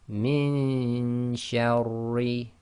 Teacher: So we're going to do the ghunna with the hiding of the noon, i.e. getting our tongue ready in the next articulation point. So it's min shawri. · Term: iqfa